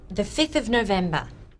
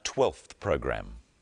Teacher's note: The ones with a v sound, 5 and 12, change their v sounds to f